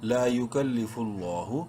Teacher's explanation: لام کو بولڈ اور ایک الف کے برابر لمبا کریں گے کھڑی زبر کی وجہ سے ، لام کھڑی زبر لا، ہا پیش ہو، لا یکلف اللہ،